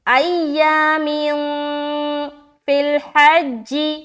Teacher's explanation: اخفا کیا، کیونکہ اخفا کے جو 15 حروف ہے اس میں سے کوئی بھی حرف اگر تنوین یا نون ساکن کے بعد آ جائے تو آپ کو اخفا کرنا ہے، یعنی کہ نون کی آواز ناک میں چھپانی ہے